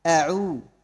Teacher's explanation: الهمزة من أقصى الحلق، والعين من وسط الحلق، والذال من طرف اللسان